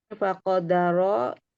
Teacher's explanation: faqadara dibacanya tafkhim karena berharokat fathah